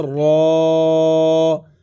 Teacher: کھڑی زبر کی وجہ سے ایک الف کی مقدار اس کو کھینچا جائے گا، را کو کھینچ کر کے پڑھا جائے گا